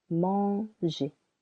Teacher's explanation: for the verb manger, the first syllable is a little longer